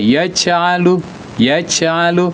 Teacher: kenapa ada c-nya karena makhrajnya tidak tepat di tengah lidah karena makhrajnya dibaca dengan ujung lidah kalau dibaca ujung lidah dia membci C dia memercik dia ya.